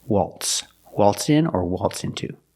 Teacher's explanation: the Z is not pronounced like a Z, it's pronounced like an S.